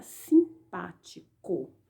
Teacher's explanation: sílaba tônica é a sílaba pa ela é pronunciada com mais intensidade e ela está em antepenúltimo lugar tem o corpo o tio